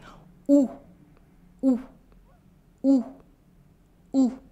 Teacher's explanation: Your lips are rounded and your mouth is almost completely closed. And your tongue is also in the back.